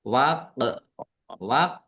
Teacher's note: Qof sukun bacaan qalqalah dibaca memantul.